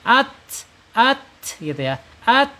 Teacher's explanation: Kemudian secara sifat ada di al-hams, mengalirnya suara ketika dia sukun ya, at gitu ya, at.